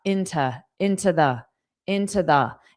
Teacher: into will sound like more of an unstressed ta